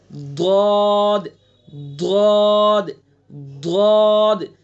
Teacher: جب ہم بائیں طرف سے نکالنے کی مشق کر لیں گے اور بائیں طرف سے ہم آسانی سے نکال پائیں گے تو پھر دائیں سے بھی نکل جائے گا اور دونوں طرف سے ایک ساتھ بھی نکل جائے گا. تو اس کا مخرج ہے زبان کی کروٹ اور اوپر کی ڈاڑوں کی جڑ